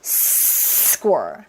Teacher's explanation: S를 길게 했다가 뱉어 주셔야 돼요. 그리고 s에 나오는 케소는 약간의 된 소리가 저절로 나와요.